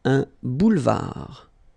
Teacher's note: Un boulevard. Final D not pronounced.